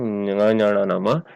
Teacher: नासिका के सहाय से अनुस्वार उच्चारण होता है, और ङ ञ ण न म वर्ग के 5वां अक्षर, ये सारे वर्ण देखिए यहाँ दिया गया है, ये वर्ग के 5वां अक्षर यहाँ ङ ञ ण न म यहाँ उच्चारण होते हैं नासिका के सहाय से। यहाँ कंठ स्थान से भी उच्चारण होता है ङ, और नासिका के उच्चारण से सहायता से भी होता है, और ञ तालु के सहायता से भी होता है, और नासिका की सहायता से भी उच्चारण होता है। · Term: नासिक्य वर्ण